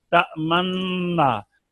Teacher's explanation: यानी जब मन्ना कहेंगे ना तो होंठों को गोल करके पेश का इशारा देंगे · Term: इश्माम